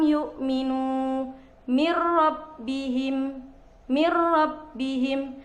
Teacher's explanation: kedua dari Idgham yaitu idgham bilagunnah memasukkan dengan tanpa dengung jadi apabila nun mati ataupun tanwin berjumpa dengan huruf lam dan ro maka bacaan tersebut dibaca tidak dengung